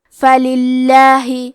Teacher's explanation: لفظ الجلالہ کے لام کا حکم ہے ترقیق تو ہم حرف اللام کو پتلی آواز میں پڑھیں گے